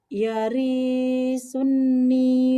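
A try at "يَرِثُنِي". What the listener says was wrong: Yarinya satu aja. Yarisuni.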